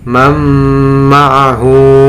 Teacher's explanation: nun sukunnya dimasukkan ke dalam mim dengan tetap menghunahkan suara nunnya.